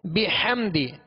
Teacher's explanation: ہا کو وسط حلق سے ادا کریں گے. بحمدی ربک، بحمدی، دال کو کھینچیں گے نہیں، دال کے نیچے زیر ہے لہذا آواز کو گرا کر ادا کریں گے.